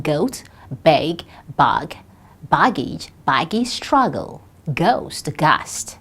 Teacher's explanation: We have g as a voiced velar plosive